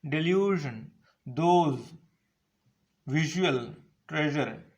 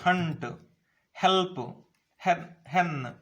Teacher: During the production of these sounds, there is a very narrow gap in the mouth. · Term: fricatives